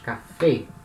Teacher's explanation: e pela mesma regra palavra e termina em vogal e e a última sílaba é a sílaba tônica é a sílaba mais forte